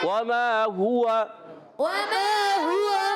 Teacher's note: واو پر زبر ہے, حرکت ہے, نہیں کھینچیں گے, مگر واو ہونٹوں کی گولائی سے ادا ہوگا. میم الف زبر ما, الف مدہ ہے, ایک الف کھینچنا ہے.